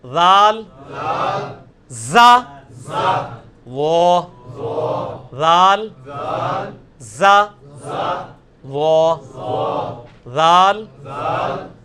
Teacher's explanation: نہیں یہ سیٹی کی آواز نہیں ذال میں آنی چاہیے, یہ نرمی والا ہے, یہ اس کے نیچے آیا ہوا ہے ذال, نرمی کے ساتھ ذال.